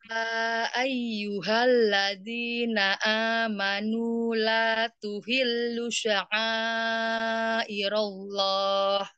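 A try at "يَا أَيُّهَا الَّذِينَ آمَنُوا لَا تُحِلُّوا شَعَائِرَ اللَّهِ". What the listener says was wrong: Oh iya, di kata tuhillu belum dua harokat.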